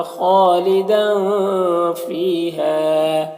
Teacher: تنوین کے آواز کو ناک میں چھپا کر پڑھیں گے ، فی میں یا مدہ ہے اور ہا میں الف مدہ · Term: اخفا